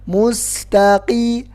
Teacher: Jadi qaf itu enggak ada hamasnya. Jadi bukan mustaqim, enggak ada ke-nya.